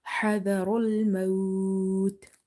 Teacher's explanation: Ra is heavy because of having fatha on top of it.